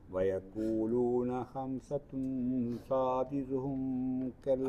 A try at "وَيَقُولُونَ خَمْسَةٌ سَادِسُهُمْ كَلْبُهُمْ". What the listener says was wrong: അവിടെ മണിക്കരുത്. സാദിസുഹും അവിടെ മണിക്കാനില്ല. സാദിസുഹും കൽബുഹും.